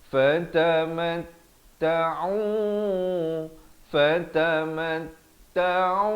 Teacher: ain di pertengahan kerongkong ini dengan baris dhammah dua harakat